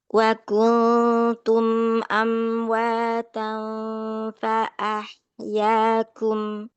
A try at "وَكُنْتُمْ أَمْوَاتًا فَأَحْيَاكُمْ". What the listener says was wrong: وكنتم أمواتا. Lurus saja, jangan ada suara yang di ayun-ayun. وكنتم أمواتا فأحياكم.